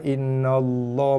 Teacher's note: Sebelum dia baris atas, lam pada kalimah Allah dibaca tebal. Innallah, bukan innallaha, nallah.